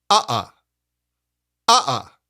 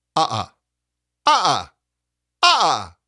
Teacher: we use clean, gentle onsets. Say, uh-uh. Uh-uh. It's light, precise, and quick. Uh-uh. Not slammed, not squeezed.